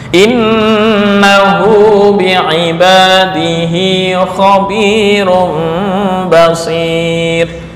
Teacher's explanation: Ini ada yang dibuang, yaitu wawu dalam penulisan, tetapi dalam wasol tetap dibaca panjang.